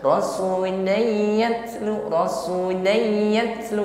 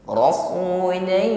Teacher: harus ada suara gunnah dengung yang sampai pada al-khayshum, rongga hidung. Kalau sekedar rasuliyatlu, rasuliyatlu, ini belum ada bunyi dengung di rongga hidung. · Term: idgham bi gunnah